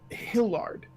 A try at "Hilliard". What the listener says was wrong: There's an I in there. Hilliard. like Juilliard.